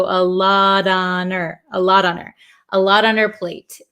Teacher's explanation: The H in her kind of disappears also.